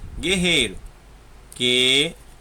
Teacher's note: Você não escuta o som do U nessas palavras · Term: dígrafo